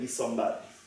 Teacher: perfectly ordinary spreading of the place feature from the labial B into the N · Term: nasal place assimilation